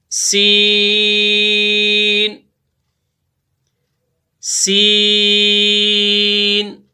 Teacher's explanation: زا کا اور سین کا مخرج ایک ہے، ان کی ادائیگی بھی سیم ہے، اس میں بھی سیٹی کی آواز پیدا ہوگی